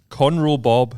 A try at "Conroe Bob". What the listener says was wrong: So when you said that, it sounded like cornrow. He said Conroe Bob. Not cornrow. See, people would have misunderstood that and thought you said cornrow. It's Conroe.